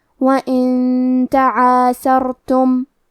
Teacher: تا حروف الاخفاء میں سے ہے تو ہم یہ حکم کو غنہ کے ساتھ ادا کریں گے۔ وَإِن تعاثرتم کلمت تعاثرتم میں حرف الراء کو موٹی آواز میں پڑھیں گے۔